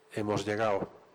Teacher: El debilitamiento y elisión de D